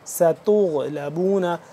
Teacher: ستغلبون غائن کے ساتھ غائن کو پر کر کے پڑھیں گے